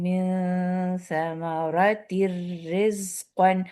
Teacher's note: من ثمرات رزقا، اب یہ تر میں تنوین کا جو سیکنڈ تنوین جو نون بنا رہی تھی ہڈن نون اس میں تھا، اس کو ہم نے را پہ بالکل داخل کر دیا ہے ، اس کو ہم ادغام تام کہتے ہیں، لام را پہ